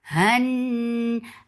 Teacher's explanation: Han, attach with noon. Noon will get sifa gunna. This gunna is akmal, so keep the sound in your nose for a longer time.